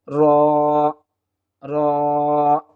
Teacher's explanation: জিহ্বার উল্টা পেট উপরের তালুর সঙ্গে লাগিয়ে দিলেই আমরা র হরফটি পেয়ে যাব